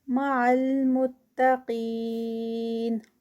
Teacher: قاف ہیوی اور 4 counts کا اسٹریچ یا مد